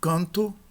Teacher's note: Nós não pronunciamos canto, mas canto. Canto aqui como A nasal, sem que o N seja pronunciado.